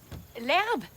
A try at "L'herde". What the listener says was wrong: Non, l'herde. L'herde. Avec un D, pas un B. L'herde.